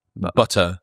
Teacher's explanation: There's two T's in butter and they're not saying either of them. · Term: glottle stop